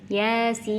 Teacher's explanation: Jadi bukan ya-nya yang panjang tapi sinnya. Bukan yasin, ya-nya 2 harokat, sinnya 6 harokat. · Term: mad lazim harfi